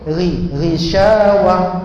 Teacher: bila ta tu ta marbutah, ta bulat, dimatikan dia jadi ha, tapi sifat tak pergi